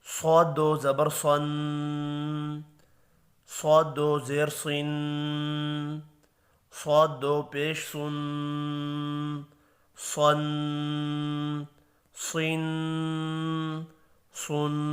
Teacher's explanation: صاد بھی حروف مستعلیہ ہے، پر پڑھیں گے